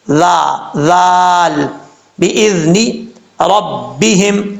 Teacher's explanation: بغیر سیٹی کے پڑھا جائے گا، بِإِذْنِ، ذال کا مخرج ہے، زبان کا سیرہ اوپر والے دانتوں کے اندرونی کنارے سے لگے تو ذال پڑھا جاتا ہے